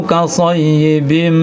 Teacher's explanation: Digabung bin ini dengan mim, bacanya bim. Ma'al gunnah disertai dengan dengung. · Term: idgham ma'al gunnah